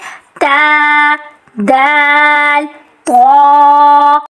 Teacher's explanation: یہ تینوں حروف زبان کی نوک کو سامنے کے دانتوں کے کنارے سے جوڑتے ہوئے ان حروف کی ادائیگی ہوتی ہے